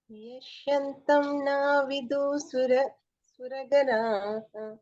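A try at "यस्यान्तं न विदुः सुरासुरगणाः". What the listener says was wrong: సురా ప్లస్ అసుర, అది ఇక్కడ ఈ మాత్ర ఉంది చూడండి, హాఫ్ మాత్ర, అది హాఫ్ ఆ అనాలి దాన్ని. సో సుర ప్లస్ అసుర, సుకి మళ్ళీ సా అవుతుంది, కొంచెం దాన్ని ఒత్తి ప్రెస్ చేయాలి. ఇది యస్యాంతం. యస్యాంతం న విదుః సురగణాః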